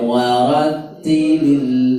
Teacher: lamnya tidak boleh mantul